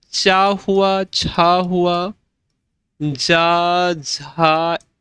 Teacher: यह सारे के सारे तालव्य ध्वनियां हैं।